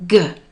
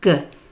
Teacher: at the end of dog, if you feel your throat will buzz. G, it's a voiced sound.